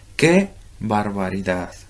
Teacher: la palabra que es dicha en un tono más agudo que la palabra barbaridad